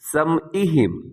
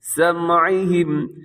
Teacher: ختم اللہ علی قلوبہم، قاف موٹا ہے، وعلی سمعہم، لوگ پڑھتے ہیں، بہت سے لوگ ایسے پڑھ دیتے ہیں سمعہم، یہاں حمزہ نہیں ہے، عین کی آواز ہو